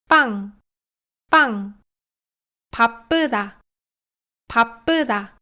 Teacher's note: fica bem claro que o p tenso não é aspirado nem no começo nem no meio das palavras e tampouco é vozeado